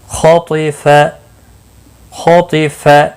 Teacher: خا اور طا دونوں حروف مستعلیہ میں سے ہیں، پور پڑے جائیں گے۔